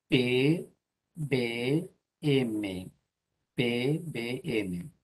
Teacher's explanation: si se junta el labio con el labio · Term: consonantes bilabiales